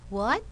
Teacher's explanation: we use rising intonation because you want speaker a to repeat